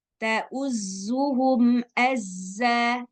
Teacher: huruf za yang ada tasydidnya, maka suara sofirnya jadi lebih keras.